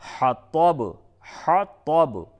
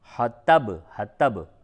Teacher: حطب طا کو پڑ کر کے پڑھیں گے۔ پڑ کا مطلب ہوتا ہے کہ منہ بھر کے اس کی آواز نکلتی ہے